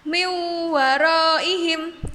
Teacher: maka huruf waw-nya seperti ditasydidkan dan huruf nunnya hilang. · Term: idgham biguna